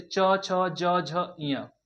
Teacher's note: यह जो च वर्ग का उच्चारण भी किससे होता है दोस्तों? तालु से होता है।